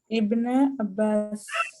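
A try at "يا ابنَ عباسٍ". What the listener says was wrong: Abbasin, okay, and we know that the Hamza of Ibn is Hamzatul Wasl, so we can also read it, or we should read it as Yabna Abbasin, Yabna Abbasin, Yabna Adama, Yabna Adam.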